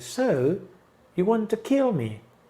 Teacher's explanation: So, subimos en so, ¿no? Subimos donde está la palabra fuerte, porque es la única que está en este IP.